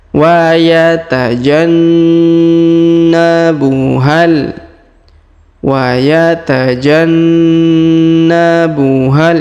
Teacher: Terdapat tanda tasdid, maka kita tahan 2 sampai 3 harokat ya